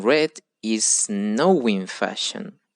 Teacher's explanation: we add a W, another W sounds between now and in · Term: linking